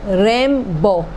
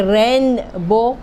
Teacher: تو یہ نون کے بعد بے آیا تو خود ہی خود ہمارے منہ سے میم بن جائے گا، اسی وجہ سے ہم بولتے ہیں ریم بو۔ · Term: اقلاب